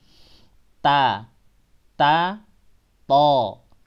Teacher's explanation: lidah lidah bagian pangkal dinaikkan supaya bunyi membulat dia Oh tapi bulatnya tebalnya huruf bukan karena bibir tapi karena pangkal lidah karena huruf-huruf itu adalah huruf lidah bukan huruf bibir ta ta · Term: menebalkan huruf